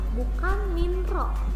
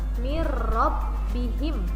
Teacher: Nah, ini cara bacanya adalah bukan min ro, tapi nunnya dianggap tidak dibaca, langsung masuk ke ro. Mirrobbihim gitu ya. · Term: idgham bila gunnah